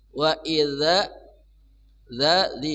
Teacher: ujung lidah bersama ujung gigi di atas